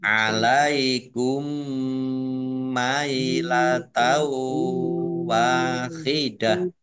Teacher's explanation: mim sukun bertemu dengan huruf mim Idam Mimi atau idgham mutamasilain dibaca mendengung mendengung mim ditandai mimnya ada tasdidnya mim tasdid dibaca gunah atau